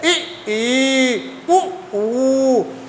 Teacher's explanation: देखिए मुख द्वार क्या है? क्या हो रहा है? क्लोज हो रहा है। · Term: संवृत स्वर